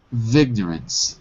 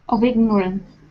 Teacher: Now you've got to say the of without the F.